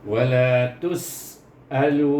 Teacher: Sin di situ ada safir, hamas, huruf ta dengan sin. Jadi sin walaupun dia hamas, dia adalah bersifat safir, berdesir, safir.